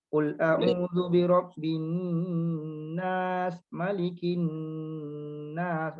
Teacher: Untuk perasan dekat situ ada nun syaddah yang perlu dibaca dengan dengung.